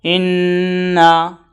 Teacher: میم اور نون مشدد کو غنہ کے ساتھ پڑھے